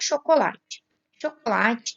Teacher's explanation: chocolate que tem a sílaba tônica na penúltima sílaba palavras que tem a sílaba tônica na penúltima sílaba são paroxítonas · Chocolate tem a sílaba tônica na penúltima sílaba.